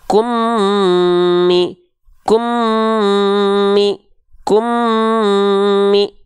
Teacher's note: Suaranya masuk ke rongga hidung. Kalau suaranya berubah itu sudah gunnah. · Jadi leburkan emnya ke em berikutnya, dengungkan. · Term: idgham mimi